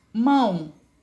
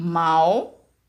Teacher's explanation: o som sai pela boca e pelo nariz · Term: som nasal